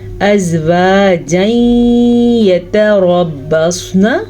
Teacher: را کو پر پڑھیں گے اور صاد کو بھی پر پڑھیں گے۔ را کو اس لیے پر پڑھیں گے کیونکہ را کے اوپر زبر ہے، جبکہ صاد کو اس لیے پر پڑھیں گے کہ صاد ہمیشہ ہی پر پڑھا جاتا ہے۔